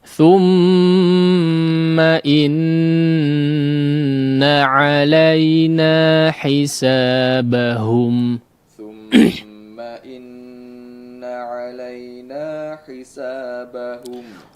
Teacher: Baik, di ayat yang terakhir di sini ya, yang menjadi perhatian kita juga untuk diperhatikan adalah dua tasydid yang memang perlu digunnahkan dengan gunnah yang paling sempurna, yaitu mim yang bertasydid dan nun yang bertasydid